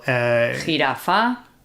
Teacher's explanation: What's important to note is that we are talking about pronunciation here in Spain. In some other countries, the J will be a lot softer than it is here. Here in Spain, it's quite a strong sound. This is the standard Spanish pronunciation. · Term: J sound